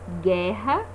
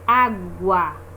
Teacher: Nós conseguimos ouvir o som do G e o som do U.